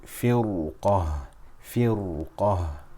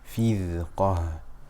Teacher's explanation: because the ra sakina is followed by a full mouth letter within the same word, the ra will be full.